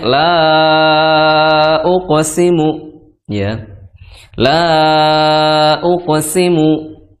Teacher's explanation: maka panjangnya di sini adalah empat atau lima harakat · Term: Mad Jaiz